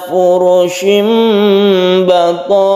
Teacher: Ada tanwin bertemu dengan ba, ini kita sebut dengan iklab, ada tanda mimnya, ini bukan tanda wakaf, tapi mim ini adalah tanda iklab, bacaan iklab yang tanwinnya tersebut berubah suaranya menjadi mim furushim karena bertemu dengan ba, ini disebut iklab.